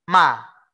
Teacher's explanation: Cuman mim, kalau kita bicara mim yang sebelah kiri ini, jalan keluar suaranya dipampet, ditutup, diblok menggunakan bibir. Ma, menggunakan bibir.